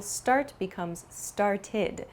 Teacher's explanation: It has an ID sound. It's not an ED sound, but an ID sound.